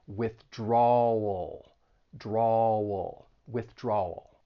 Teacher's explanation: that I think people have trouble with that dark l so you're going to stress that second syllable and move right into that dark L